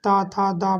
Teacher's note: त था द बोलिएगा तो आप दांत में स्पर्श होंगे ये तो दंता कहा जाता है